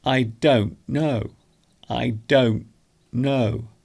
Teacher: we don't pronounce the T very strongly · so you can hear there I'm actually making the T silent